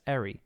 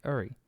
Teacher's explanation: meny speakers, especially Americans and Canadians, pronounce the suffix [-ɛɹi], while others, like myself for instance, pronounce it more like [-əɹi]